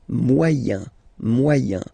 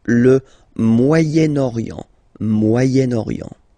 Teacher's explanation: So it's interesting here because normally if you would have only this word here, you would pronounce it moyen, moyen, okay? But then as you've got this vowel after, okay, you get to make the liaison between the two